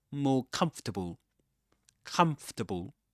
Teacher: Even though Even though you see in the spelling four syllables comfortable or fable, but it's pronounced comfortable as three syllables in this accent, of course